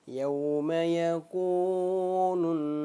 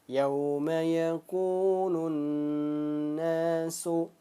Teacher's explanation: Mad tabi'i ini dia panjangnya 2 ketukan. Ingat 2 ketukan, jangan sampai ditambah-tambah.